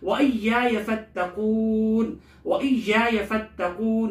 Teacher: وَإِيَّايَ فَاتَّقُونَ یہاں یا کو سختی سے پڑھیں گے، تھوڑا سا رک کر تشدید کی وجہ سے. فتقون کی تا کو تھوڑا سا رک کر سختی سے پڑھیں گے، تشدید کی وجہ سے. قون کی قاف کو موٹا پڑھیں گے. · قون کی قاف کو موٹا پڑھیں گے. آخر میں قون یہاں مد عارض وقفی ہے، اس کی مقدار 2 یا 4 الف کے بقدر ہے.